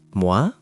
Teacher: Wa is u plus a, making wa, like moi, meaning what. Your lips start very rounded, then relax.